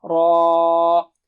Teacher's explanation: مد متصل ہے، یعنی 5 حرکت دینی ہوگی آپ کو